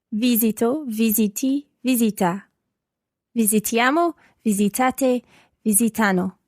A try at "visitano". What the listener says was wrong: But just watch your accent on the third person plural. Visitano.